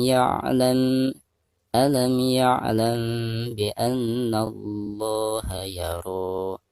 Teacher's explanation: Alam mim sukun berhadapan dengan huruf ya dihukumi izhar syafawi, dan cara membacanya harus dijelaskan.